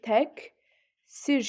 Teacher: təqsir sözü tək sir şəklində olur. Yəni q, k-ya çevrilir. Ə incə, dodaqlanmayan açıq, i incə, dodaqlanmayan qapalıdır.